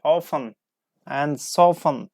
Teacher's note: English speakers often drop the T